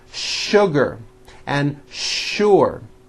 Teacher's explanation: words in English that are written with the letter s but are pronounced with the sh sound